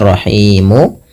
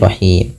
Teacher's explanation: Sukunnya bukan sukun asli. Awalnya rahimu dimatikan menjadi rahim. Nah, sebelum huruf sukun arid ini ada huruf mad berupa alif, waw atau ya.